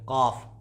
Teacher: लिहात यानी कौवे की मुत्तसिल ज़ुबान की जड़ और उससे काफ अदा होता है · ये काफ है और इसकी आवाज़ मोटी होती है और इसका मखरज है ज़ुबान की जड़, यानी कि ये ज़ुबान की बिल्कुल लास्ट वाली जड़, और इसको आप जस्ट ऊपर इसके मुत्तसिल में लगाएंगे, इसके करीब में टच करेंगे तो आप काफ की अदायगी कर लेंगे।